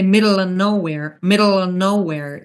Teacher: So if you want to do it in American style, instead of saying middle of nowhere, you can say middle of nowhere, middle of nowhere. So we drop the V sound if the of is in a sentence